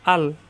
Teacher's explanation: এখন এটা হামজা, হামজা যাবর মিলবে লামের সাথে। আল কণ্ঠনালীর শুরুতে উচ্চারণ, গলার ভিতরে যাবে না। আল লামের মাকরাজ জিব্বার আগার কিনারা উপরে যাতে গোড়ায় লাগিয়ে।